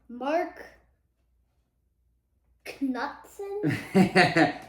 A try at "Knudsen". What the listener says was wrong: Well, the K is silent.